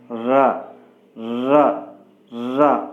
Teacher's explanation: keep your finger on the throat and pronounce ra, ra, ra. Your vocal cord vibrates, slightly vibrates